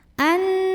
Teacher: Di sini ada hukum gunnah musyaddadah karena ada nun yang bertasydid. Maka cara membunyikannya adalah nunnya didengungkan, tahan kurang lebih 2 harokat. Anni. Ni mad tabi'i karena ada ya sukun didahului kasrah.